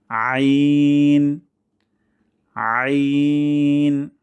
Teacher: তবে হরফটি পাতলা কিন্তু গলার মাঝখান থেকে চেষ্টা করতে হবে · গলার মাঝখান থেকে আমরা চেষ্টা করব, যদি প্রাথমিক অবস্থায় না হয় তাহলে গলার মাঝখানে আঙ্গুল দিয়ে একটু প্রেস করতে পারি এই হরফটি প্র্যাকটিস করার জন্য।